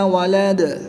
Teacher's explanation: دال کے اوپر 2 پیش ہیں تو وقف کی حالت میں ان 2 پیشوں کو ساکن کر دیں گے۔ وقف کی حالت میں دال پر قلقلہ ہوگا تو یہاں پر ہم قلقلہ خوب ظاہر کر کے پڑھیں گے۔